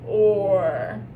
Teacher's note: Or's hard because you have to have that lip rounding component of it.